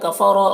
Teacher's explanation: کفر را کو پر پڑھیں گے ، ذی میں یا مدہ ایک الف کے برابر کھینچیں گے،